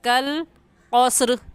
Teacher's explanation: قاف موٹے حروف میں سے ہے دوسرا، تو اس کو موٹا کر کے پڑھیں گے، یعنی اپنے ہونٹوں کو گول کر لیں گے